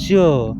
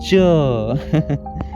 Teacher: जैसे आप च कहते हैं पहले जीभ तालू से चिपकती है, बोल के देखिए च, यानी जीभ जो है तालू यानी कि आपके मसूड़ों के ऊपर वाले जो भाग हैं यानी मुंह में, वही चीज मैं बोल रहा हूँ। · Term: स्पर्श संघर्षी